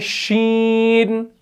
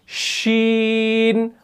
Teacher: जुबान का जो बीच वाला हिस्सा है और ऊपर का जो तालु है उसके दरमियान में थोड़ी सी गैप है